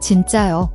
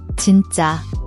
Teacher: Watch your pronunciation, the double JJ sound. It's a tense, emphasized J sound, like DZ in ads, not a soft J.